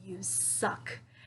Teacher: with that angry tone and i'm putting the stress on the words suck